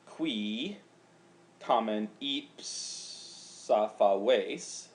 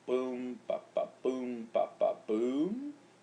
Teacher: a pentameter line has a couple of dactyls and then a middle syllable where it's a long syllable in the middle that breaks the line, followed by a couple, 2.5 more feet, or 2 dactyls and another long.